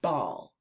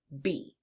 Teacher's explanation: To make the B sound, start by pressing your lips together firmly and then releasing a puff of air while turning on your voice. You can feel the vibration of your throat as your vocal cords work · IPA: /b/